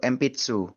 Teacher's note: Saking memang huruf P dan huruf B itu memang diucapkannya ya tidak lain dan tidak bukan ya dengan mengetupkan dua bibir, saling mengaturkan dua belah bibir seperti itu dan kuat memang sifatnya. Sehingga tulisan N yang bertemu dengan huruf ba ataupun huruf P kalau di bahasa-bahasa lain itu tulisan N itu terpaksa dibaca M gitu